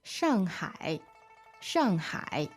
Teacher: So the tones there are 4th tone and then 3rd tone